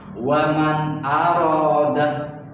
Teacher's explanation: Secara istilah menurut ilmu tajwid, apabila ada non sukun atau tanwin bertemu dengan salah satu yang 6 huruf, maka itu dibaca idhar, dibaca terang tanpa mendengung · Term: idhar khalqi